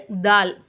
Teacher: நம்ம நாவிட நுனிப்பகுதியை கொண்டு போயிட்டு மேல் பற்களுடைய உள் சைடுல ஓரங்களை தொடும்போது தால் அப்படிங்கிற எழுத்து வருது